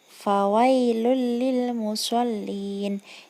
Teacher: karena domah tanwin yang ada pada huruf lam bertemu dengan huruf hijaiyah lam sehingga dibaca melebur dan tanpa dengung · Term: idgham bila gunnah